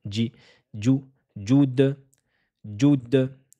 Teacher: Il faudra bien la prononcer comme s'il y avait un D imaginaire. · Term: la lettre Jim